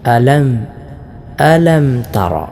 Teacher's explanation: അലം സുക്കൂനുള്ള മീം ഉച്ചരിക്കുമ്പോൾ പ്രത്യേകിച്ചും ചുണ്ട് ശരിക്കും അടയണം.